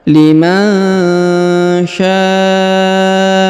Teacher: Huruf nun sukun bertemu sya maka didengungkan dan disamarkan.